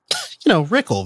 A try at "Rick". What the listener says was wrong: It's Rick. Rick, just R-I-C, Rick. It's not even a K. It's just Rick. Real short. terse.